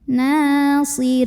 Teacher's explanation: ra-nya dibaca secara tarqiq karena ra-nya berbaris kasrah, maka bacanya tipis, lidah datar, nyantai. Nasirin. Kemudian di sini ada mad arid li sukun karena ada mad tabi'i bertemu dengan huruf yang disukunkan karena waqaf.